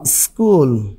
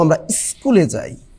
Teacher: বললাম স্কুল আদি সরাগম মানে এই কথাটা বললাম কি স্কুল এখন যখন আবার উচ্চারণ করবে সেম ধ্বনিটা তখন প্রথমে একটা স্বরধ্বনি চলে আসবে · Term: আদি স্বরাগম